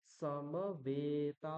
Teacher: যে অকার তার হ্রস্ব উচ্চারণ এবং মকার সরি এখানে বকার হবে বকার এবং তকারের পরে যে এককার আর আকার রয়েছে তাদের দীর্ঘ উচ্চারণ হবে · এখানে সকার এবং মকারের পরে যে অকার তার হ্রস্ব উচ্চারণ